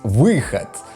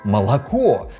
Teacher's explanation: расейскі «выход» ніколі не вымаўляецца як «выход». Расейцы таксама кажуць «выхад».